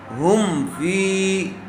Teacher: میم ساکن کے بعد کیا آیا ہوا ہے؟ فا آیا ہوا ہے، اس لیے میم کو ظاہر کر کے پڑھیں گے۔ ہم فی، ہم، ہا میم پیش ہم، میم کو ظاہر کر کے پڑھیں گے۔ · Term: اظہار شفوی